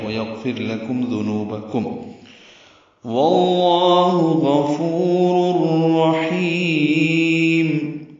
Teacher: مکمل طور پر را سے مل گیا، نون کی آواز یا تنوین میں جو نون کی آواز ہوتی ہے وہ ختم ہو گئی. غفور الرحیم، ہا وسط حلق سے نکالیں گے، را میں دونوں رائیں پر ہیں، ہا وسط حلق سے نکالیں گے اور لمبا کریں گے، میم ساکن پہ ہونٹ بند کر لیں گے. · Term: ادغام بلا غنہ